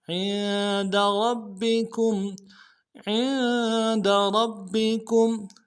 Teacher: الف دال میں کھینچیں گے، ہی، بہ عند ربکم، عند ربکم، عین کو نون کے ساتھ ملانا ہے، عین کو موٹا کریں گے، نون ساکن غنہ کریں گے ، دال کو نرم سے ادا کریں گے، عند ربکم، ربکم،